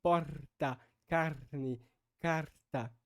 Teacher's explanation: a preferência até então era o uso do R, que é chamado de R apical-alveolar, que seria então realizado dessa forma assim: porta, carne, carta.